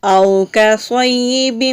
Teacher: او حروف لین ہے، واو لین ہے، تو لین کے حروف کو لمبا نہیں کرتے، واو سے پہلے جب بھی زبر آتی ہے تو واو کو لمبا کر کے نہیں پڑھا جاتا، نرمی کے ساتھ بغیر جھٹکے کے پڑھا جاتا ہے۔ کاف باریک ہے، صاد موٹے حروف میں سے ہے، مستعلیہ حروف کو موٹے حروف کہتے ہیں، اور یا مشدد ہے تو یا کو ہم مضبوطی کے ساتھ ذرا رک کر پڑھیں گے۔ · یا مشدد ہے تو یا کو ہم مضبوطی کے ساتھ ذرا رک کر پڑھیں گے۔ با کے نیچے تنوین ہے، آگے میم آ رہا ہے، جب بھی تنوین اور نون ساکن کے بعد میم آتا ہے تو وہاں ہم ادغام کرتے ہیں غنہ کے ساتھ۔